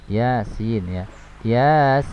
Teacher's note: ya-nya mad tabi'i harfi 2 harokat, kemudian sin 6 harokat ya. Karena tidak ada proses idgham maka dihukumi dengan mad lazim harfi mukhaffaf ya.